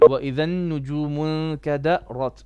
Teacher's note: the ra is recited with full mouth, but still must remain subtle, as is a very common thing among Asians to overemphasize the letter ra.